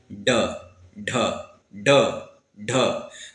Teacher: अब कठोर तालु यानी तालु का जो कठोर भाग होता है बीच वाला, इसे हम लोग क्या कहते हैं, मूर्धा, और मूर्धा को स्पर्श करके झटके से नीचे गिरती है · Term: उत्क्षिप्त व्यंजन